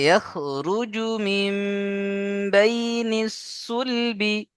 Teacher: হ্যাঁ, মাশাআল্লাহ, একে ইকলাব বলে। চলেন, নুন সাকিনকে মিমের দ্বারা পরিবর্তন করে একালিফ গুণনা করে পড়তে হবে